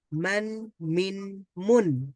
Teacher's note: কাসরা হলে ই সাউন্ড হবে আর তা হলে উন্ড হবে তবে অতিরিক্ত একটা জিনিস করতে হবে সেটা হচ্ছে নুন সাউন্ডটাকে যোগ করে দিতে হবে শেষে তো আ সাউন্ডের সাথে একটা নুন সাউন্ড হবে আন তারপরে এখানে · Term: তানভীন